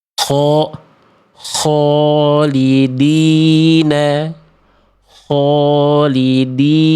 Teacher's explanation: Kho berharokatnya dilafalkan dengan memonyongkan bibir ketika berharokat fathah.